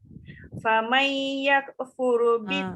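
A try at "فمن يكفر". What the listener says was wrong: Faman itu dengung sikit. Faman yakfur. Jangan bunyi yakfur.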